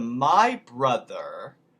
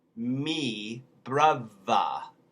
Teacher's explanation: the voice th becomes a v